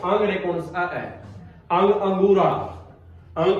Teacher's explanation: जब आप अंग या अंगूर को बोलना है तो आवाज कहां से आओगी नाक से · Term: अनुस्वार